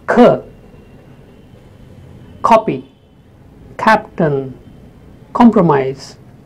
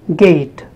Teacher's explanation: So K is a voiceless sound. And G in the same position, but a voiced sound